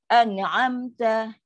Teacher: Kan jauh jarak tu. Bila jauh jarak, bunyi dia terpaksa jelas. Bunyi tu jelas. Bunyi nun tu jelas.